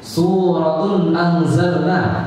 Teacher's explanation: Salahnya di sinnya dibaca sod.